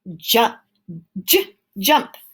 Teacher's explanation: so j is a consonant it's voiced and it's stopping